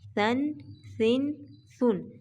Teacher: نہ سیٹی پیدا کریں گے اور نہ ہی اس کو موٹا کر کے پڑھا جائے گا